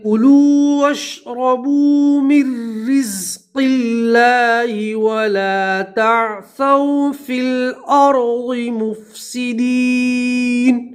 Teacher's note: نون کے اوپر زبر وقف کریں گے تو زبر کو ہم جزم سے بدلیں گے